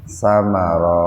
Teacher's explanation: idgham samsiyah karena membacanya dimasukkan ke sa tanpa mendengung.